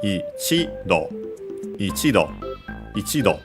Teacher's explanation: on the chi, the accent, low, high, low